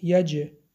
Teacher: حرف جیم با سکون قلقله صدا می دهد. یج قلقله می کنیم.